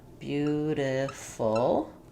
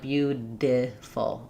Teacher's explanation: All I'm doing there is actually lifting my tongue to the spot for the T and the D, lightly tapping it up, and bringing it back down. The reason I write it with a D is that it's a voiced sound. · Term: flap